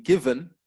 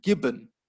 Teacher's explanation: given, the teeth with the bottom lip, given, and gibbon, where you got the two lips coming together